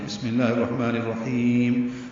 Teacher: ہا وسط حلق سے ادا کرتے ہوئے لمبا کریں گے